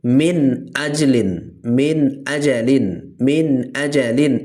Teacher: এই নুন সাকিন এখানে কোনো গুন্নাহ করা যাবে না, এখানে পুরো স্পষ্ট করতে হবে। এখানে মিন আজলিন, মিন আজালিন, মিন আজালিন এভাবে বলতে হবে, ঠিক আছে?